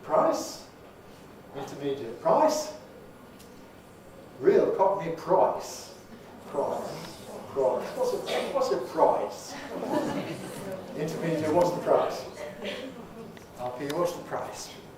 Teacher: price in its turn undergoes a change of backing